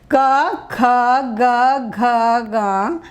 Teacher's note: ये पहला कवर्ग जो है कंठ से, चवर्ग जो है तालु से, टवर्ग जो है मूर्धा से, तवर्ग दांतों से और पवर्ग जो है ओंठों से टच करते हुए, उसको छूते हुए जो है बाहर आती है।